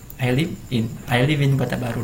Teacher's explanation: Huruf konsonan itu atau huruf mati itu bertemu dengan huruf vokal, itu bisa digabungkan penyebutannya alivin. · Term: penyambung kata